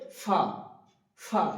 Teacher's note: ফা উচ্চারণ করার সময় উপরের দাঁত নিচের ঠুটের সঙ্গে লাগে। উপরের দাঁত নিচের ঠুটের সঙ্গে লাগে। · উপরের দাঁত নিচের ঠোঁটের সঙ্গে লাগিয়ে উচ্চারিত হবে ফা, ফা, এবং একটা বাতাস বেরোবে মুখ থেকে, যখন আমি বলা শেষ করব শেষের দিকে ফা, একটা বাতাস বেরিয়ে যাবে।